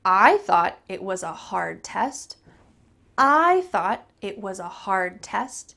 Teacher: I'm emphasizing I and hard test.